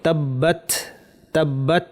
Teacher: এখানে তা সাকিন আছে। তা এর একটা বৈশিষ্ট্য হচ্ছে একটু বাতাস বের হবে। · তায়ের একটা বৈশিষ্ট্য হচ্ছে একটু বাতাস বের হবে। তাব্বাত তাব্বাত, এই যে বাতাসের আওয়াজটা শুনলেন, একটু বাতাস আমরা বের করব।